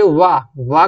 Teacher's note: वाह का जो उच्चारण स्थान होता है वो क्या दंत भी होता है और ओष्ठ भी होता है। ठीक है, दंत भी होता है और ओष्ठ भी होता है। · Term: दंतोष्ठा